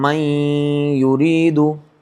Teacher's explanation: یعنی کہ پڑھیں گے ہم من یریدو, تو اس میں نون ساکن کا بھی ادا ہوگا غنہ, ناک میں آواز لے جائیں گے اور غنہ کر کے ہم اس کو پڑھیں گے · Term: ادغام مع الغنہ